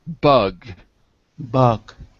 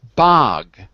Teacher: so the one is uh and the other is ah like father